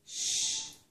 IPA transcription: ʃ